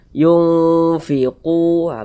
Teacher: Di bagian yungnya itu kita tahan, kita panjangkan sejenak. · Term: ikhfa hakiki